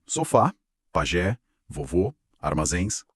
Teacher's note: Aquelas palavras com a força na última sílaba. A força no finalzinho. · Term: oxítonas